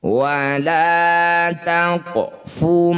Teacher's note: Wala taqfu, ada qaf sukun di tengah bacaan disebut bacaan qalqalah sugro. Bunyi qaf dipantulkan, pantulannya kecil saja, jangan berlebihan. Wala taqfu ma laysa laka bihi ilmun.